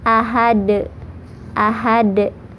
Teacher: Qalqalah kalau di akhir atau di ujung ayat itu qalqalah kubro atau qalqalah besar, karena ada huruf qalqalah yang disukunkan karena waqaf. Huruf qalqalah di sini yaitu dal, jadi pantulannya besar.